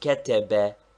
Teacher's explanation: if all the vowels are short as in ketebe the first one is slightly accented